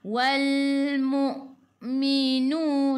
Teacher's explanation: Wal masuk ke dalam lam, alif lam qamariyah, lam nada sukun. Hamzah baris sukun kena baca dengan putus